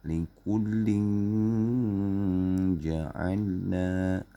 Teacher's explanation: Fa in ja'uka, tanwin ketemu jim. Lingkuding, jadi lin tak jadi ling. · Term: ikhfa hakiki